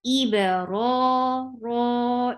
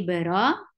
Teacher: This is called taba'ud. Iba, ra is 2 counts long, and it is heavy. The sound should be ra. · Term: heavy raw